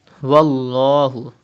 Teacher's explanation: pronounce lam with thicker voice.